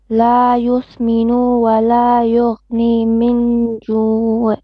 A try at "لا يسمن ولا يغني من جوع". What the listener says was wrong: يسمن. Only short vowel. لا يسمن.